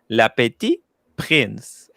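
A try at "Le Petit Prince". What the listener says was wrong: But you don't pronounce the T at the end of petit. Petit.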